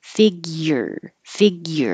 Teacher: It's going to be high in the back for the G, fig, but then the front has to come high for a Y, figure, figure. If you don't have the Y, it will sound like figures, and that's not it.